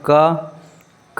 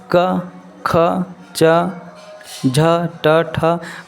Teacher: क में कुछ कंपन नहीं होता। ख में भी कुछ कंपन नहीं हो रहा है।